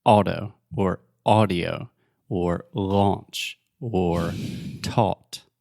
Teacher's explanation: the point is just one sound, aw.